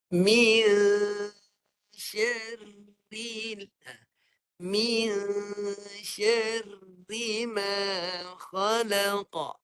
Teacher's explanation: Ra mati tu kena baca dengan jelas. Jangan terlepas pandang. Dan nak dengar getaran halus.